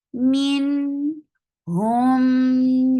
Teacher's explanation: idgham shafwi, give good time for gunna